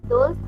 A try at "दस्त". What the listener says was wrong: दोस्त नहीं, यहाँ पे दस्त होना चाहिए, गलत हो गया है।